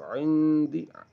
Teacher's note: نون ساکن کے بعد دال آ رہی ہے تو نون کو چھپا کر پڑھ رہے ہیں